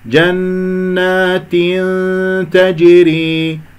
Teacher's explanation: أكمل الكسرة ثم بعد ذلك أدخل في الإخفاء